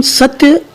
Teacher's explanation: आप देखें ध्यानपूर्वक, यदि संयुक्त अक्षर से पूर्व उदाहरण के तौर पर आप पुस्तक में ध्यान दे रहे होंगे, जैसे सत्य लिखा है, स लघु वर्ण है जिसमें अ स्वर उच्चारित हो रहा है, और आगे संयुक्ताक्षर के रूप में त्य। जब हम सत्य शब्द का उच्चारण करते हैं तो स पर अधिक बल दिया जाता है